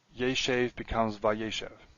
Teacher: Yeshev becomes vayeshev. Accent shifts back. Theme vowel tsere shortens to segol.